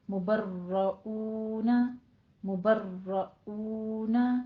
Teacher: مبرؤون میں را مفخم ہے اور را پہ نبر بھی ہوگا، تھوڑا سا تکرار ہوگی